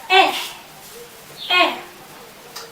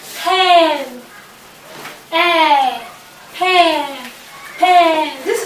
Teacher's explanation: To pronounce this vowel eh, the front of the tongue is raised a little from the floor of the mouth. It is also pushed a little to the front of the tip of the tongue.